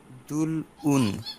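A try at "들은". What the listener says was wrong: না। কেন দুল, দুল উন, দুন উন আমি শুনলাম, রিয়ল থাকলে নিচে থাকলে কি হয় ল, কিন্তু রিয়লটা তো এখানে থাকবে না, কারণটা কি, পরে আমার স্বরবর্ণ আছে, তাহলে রিয়ল চলে যাবে ওখানে, আর ওখানে চলে গেলে উচ্চারণ কি হবে র, তাহলে হবে কি দুরুন। এটা কিন্তু দু না, দু, মুখটা একটু চ্যাপটা করে আপনাকে পড়তে হবে গলার ভিতর থেকে, দু রুন।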